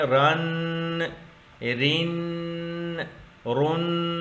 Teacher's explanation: یہ ہے غنہ، ناک کے اندر آواز کو گھمانا